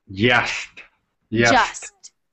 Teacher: you put your tongue where you would put your D, and then you actually almost make the sh sound. So it's going to sound like ja.